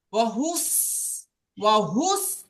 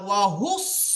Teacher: সিনের আওয়াজটা হলো পাতলা আর সদের আওয়াজটা হলো কি মোটা তো আমরা ওই মোটা আওয়াজ দিয়ে পড়বো সদের মোটা আওয়াজ দিয়ে